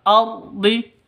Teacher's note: Ra-nya ra tafkhim, ra tebal, ardi.